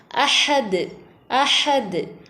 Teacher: அஹது அதுல லாஸ்ட்ல உள்ள இந்த தால் கல்கலாவுடைய எழுத்து ஆயத்தினுடைய கடைசி வந்திருக்கிறதுனால இது கல்கலா குபுரா அப்ப நம்ம நல்லா நல்லா அசைச்சு ஓதணும்